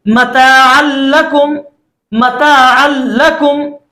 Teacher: यहां पर हमने आइन को डायरेक्ट लाम के साथ मिला दिया है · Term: इदगाम बिला गुन्ना